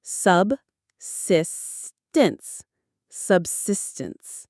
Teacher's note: The stress is on that second syllable, sis.